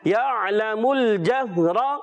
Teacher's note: عین کی ادائیگی کلیئر رکھنی ہے، حمزہ سے نہیں بدلنا چاہیے، اس کا خیال رکھیں گے، لام نہیں ہلنا چاہیے.